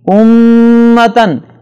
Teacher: امتن میم پر شد ہے، لہٰذا اس پہ غنہ ہوگا